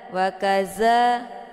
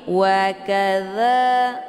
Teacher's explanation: Dza ini sifatnya adalah hamas, maka ada desis angin yang agak samar-samar. Jadi jangan ditekan ya hurufnya, jangan wakaza dan anginnya jelas, itu bacaan yang salah.